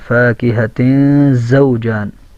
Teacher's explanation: واو کے اندر ہونٹ گول کرنا ہے اور زا کے اندر سیٹی کی آواز کا آنا ضروری ہے. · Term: حروف صفیریہ